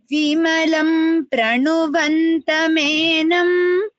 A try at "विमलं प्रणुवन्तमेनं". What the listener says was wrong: It is not pranuvanta, it is pranu. You're saying it in between, just make it a little more n. Pra. So because the rakara is there, the nakara becomes anakara. Tata dadha na.